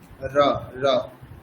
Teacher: র মানে মূর্ধাতে স্পর্শ করবে জিহ্বা,